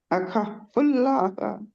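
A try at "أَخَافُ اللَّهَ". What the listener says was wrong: खा को दो हरकत के बराबर खींचे। खा, इसको खा को खींचे दो हरकत के बराबर। आखा फुल्लाह। फुल्लाह। आ-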